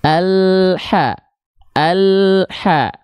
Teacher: dia nggak boleh ada pantulan karena dia nggak punya sifat qalqalah pada huruf lam